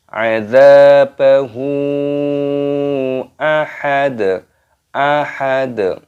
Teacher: dalnya dibaca sukun ataupun mati dan diqalqalah